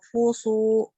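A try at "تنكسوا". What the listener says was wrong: Tang. NG. Tang. Nah, itu masih ada yang keluar dari mulut ketika hidung ditutup. Harusnya hilang.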